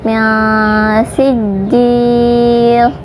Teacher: di atas jim itu ada tasdid, jadi agak ditekan